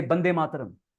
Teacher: in Bengali language there is no sound of w which is pronounced by W or V so they say B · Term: mother tongue influence